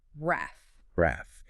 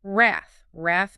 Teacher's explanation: we absolutely must emphasize that short A sound here, right? Like the A in cat, wrath. Many speakers might mistakenly stretch it, or maybe drop the R sound somehow.